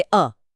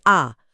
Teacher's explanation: ह्रस्व कम समय जैसे अ, दीर्घ दुगना समय जैसे आ